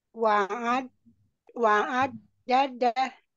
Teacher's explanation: di huruf ainnya ya jangan ke rongga hidung tidak melewati rongga hidung